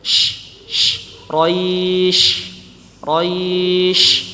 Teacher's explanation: huruf syin Sya ya lidah menempel ke atas bagian atas mulut ya langit-langit mulut